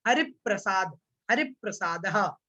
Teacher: रा जो है, रा के साथ में पा, इन दोनों को जोड़ना है।